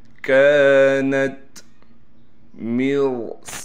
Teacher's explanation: میم کو را سے ملائیں گے، را کو موٹا کر کے پڑھیں گے۔ صاد کے بعد الف ہونے کی وجہ سے صاد کو کھینچیں گے بھی اور صاد کو موٹا کر کے بھی پڑھیں گے، اور صاد میں سیٹی بھی نکالیں گے۔